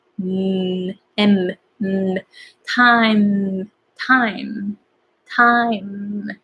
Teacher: So the air comes out from your nose. It's called nasal. So you want to have very strong ending when you have M at the end of a word or a sentence.